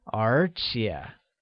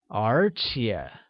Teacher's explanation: spoken using a mid rising tone on the first E and a falling rising tone on the second